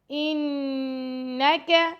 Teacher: نون پر تشدید آ گیا تو یہاں پہ ہم غنہ کریں گے، لمبا نہیں کرنا ، ٹھیک ہے، اور کاف کو بھی لمبا نہیں کرنا، اِنَّكَ